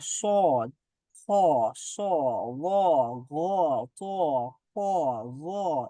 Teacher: জিহ্বার গোড়া উপরের দিকে উঠে আওয়াজটা মোটা হয়। যেমন খ, খ উচ্চারণ করা, সদ, খ, স, গ, ঘ, চ, খ, গ, এগুলার আওয়াজটা কেমন জানি একটু গম্ভীর, কেমন জানি একটু মোটা হচ্ছে, একটু কেমন যেন আহ মানে জিহ্বাটাকে উপরে তুলে মোটা করতে হচ্ছে, তো এটাকে বলা হয় মুস্তাআলিয়া বা ইস্তেআলা।